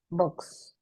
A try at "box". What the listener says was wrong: kedengarannya malah kayak books. Jadi pelafalannya malah mirip book kayak gini. Yang benar adalah box. Box. Agak ada A-nya. Box. Ini kan book emang double O jadi U ya. Book. Books gitu.